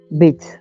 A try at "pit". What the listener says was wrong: No, P I T T, like Brad Pitt. Armpit.